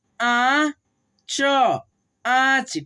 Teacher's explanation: नाक से उच्चारण और मुंह से उच्चारण दोनों से होता है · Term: अनुनासिक